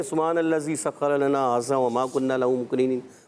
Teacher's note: ذال کو آپ نے زا پڑھ دیا ہے، ھذا میں ذال کو زا پڑھ دیا، اور جو ہے کہیں قاف پر کرنا تھا تو باریک کر کے چلے گئے، تو ایسے نہیں کرنا، ایسا نہیں کرنا۔